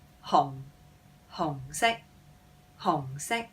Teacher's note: red in Cantonese is a low-falling hong, hong sek, hong sek.